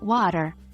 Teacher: the T in water it sounds almost like a d so instead of what tear it's more like water